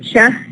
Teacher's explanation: The cha is a voiceless alveopalatal affricate